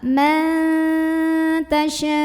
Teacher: Wa tu'izzu man ada hukum ikhfa aqrab, karena ada nun sukun yang bertemu dengan huruf ta. Maka nun sukunnya ini dibunyikan samar-samar menuju huruf ta sambil ada dengungannya. Jadi ini dibunyikan ma, samar-samar, mau bilang tak, ma tasya.